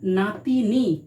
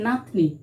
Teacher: তাহলে মাঝখানের হস্যইটা লোপ পেয়েছে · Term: মধ্য স্বরধ্বনির লোপ